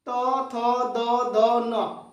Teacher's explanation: जीभ दांत में सटता है